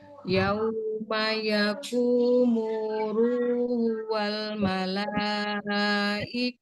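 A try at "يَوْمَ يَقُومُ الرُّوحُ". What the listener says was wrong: Nah, itu harusnya masuk, Bun. Alif lam samsiah. Yauma yakumur. Mur. Tapi jangan juga. Yauma yakumuru. Yauma yakumuru. Aduhnya belum kedengeran.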